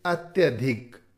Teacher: इसी प्रकार अति, इसके रूप मिलेंगे अति, दीर्घ ई होगी तो अति, या ई का य बनेगा तो अत्य, जो स्वर आगे होगा वो य में मिल जाएगा